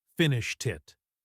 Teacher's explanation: It ends with a t sound. And because the next word is it, which starts with a vowel, that final t sound links over. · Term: linking